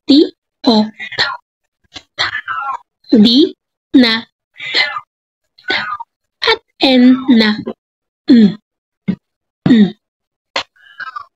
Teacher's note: Ikatlo ay ang pangipin. Ang mga ponema ay ibinibigkas sa pamamagitan ng pagdidiit ng dila sa likuran ng mga ngipin sa itaas.